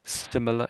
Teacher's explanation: The R is a bit sort of not really there, I would say.